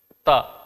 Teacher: ता बोलते समय जीभ दांत में टच कर रही है